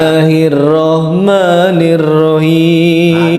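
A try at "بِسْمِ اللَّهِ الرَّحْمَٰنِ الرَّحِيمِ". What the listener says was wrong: Ini dua salahnya. Salah yang sama yaitu tentang ha ya, huruf ha, makhorijul huruf di dalam huruf ha. Jadi beliau bacanya Bismillahirrahmanirrahim, pakai seakan-akan ha ya. Jadi salah. Bukan Rahmanirrahim, itu kesalahan 2 dan kesalahan 3.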